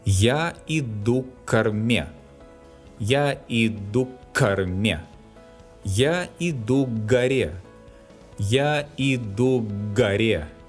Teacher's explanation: When the preposition к appears before a word beginning with K or G, we pronounce long K and G respectively.